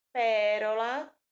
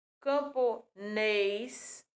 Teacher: o som do é tá aberto